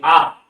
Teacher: জিহ্বা সবচেয়ে নিচের অংশে থাকছে এবং জিহ্বার একদম মূল থেকে নিচের অংশ থেকে ধ্বনিটা আমাদের বেরিয়ে আসছে আ, তাই জন্য এটা হচ্ছে নিম্ন স্বরধ্বনি।